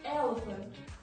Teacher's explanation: one stressed and two unstressed syllables. For example, elephant. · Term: dactyl